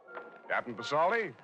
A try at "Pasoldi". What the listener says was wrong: P is silent, son, as in facade.